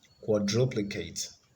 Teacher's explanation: So that has the stress on the second syllable.